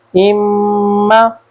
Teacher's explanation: गुन्ना करते हैं, अम्मा, ये जो आवाज़ जाती है वो नाक में चली जाती है। यह हर्फ मीम के लिए हमने गुन्ना करना होता है, अम्मा।